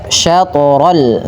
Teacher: ta dipantulkan dan tidak ada tambahan hamzah ya teman-teman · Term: qalqalah